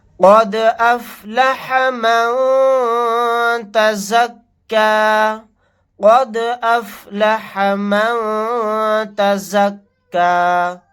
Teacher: دال ساکن ہے، یہاں پر قلقلہ کر کے پڑھیں گے. نون ساکن کے بعد تا آ گیا، یہاں پر اخفا کا قاعدہ ہوگا.